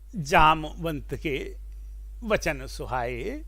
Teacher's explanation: अब ये जो 16 मात्रा वाला प्रत्येक चरण चौपाई का होता है तो जैसे ही आप पहली चौपाई पढ़ते हैं, जामवंत के वचन सुहाए, तो जाम में 3 मात्राएं, जा में 2 मात्रा क्योंकि वहां दीर्घ है, म में ह्रस्व है तो 1 मात्रा, वंत में व दीर्घ हो गया क्योंकि आगे न और ता का संयोग है तो 2 मात्राएं व में, और त में 1 मात्रा।